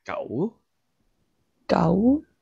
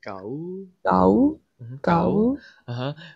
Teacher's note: Remember this is a rising tone